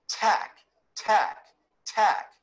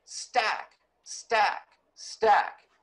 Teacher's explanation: big puff of air and when you say stack stack stack you can certainly feel some air but there isn't that big puff that comes out with tack · when you pronounce the T morpheme in tack, there's this big puff of air that comes out.